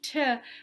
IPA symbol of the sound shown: t